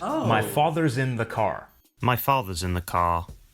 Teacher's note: British English is non- Ric meaning that the r sound is not pronounced unless it's followed by a vowel sound